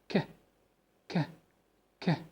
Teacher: the vocal cords are not vibrating. There is no any movement for the vocal cords. ما فيش أي اهتزاز أو أي حركة للأحبال الصوتية لأنهم متباعدين. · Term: voiceless sounds